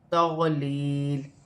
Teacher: یا ساکن سے پہلے زیر ہے تو یا مدہ بنے گی، اسے 1 الف کی مقدار کھینچ کر پڑھا جائے گا۔ 2 زیر کی تنوین میں وقف کیا جائے گا تو وقف کی صورت میں 2 زیر کی تنوین گر جائے گی اور لام ساکن ہو جائے گی۔